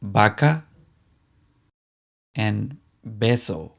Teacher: in latin america both the v and the b sound like the b in baby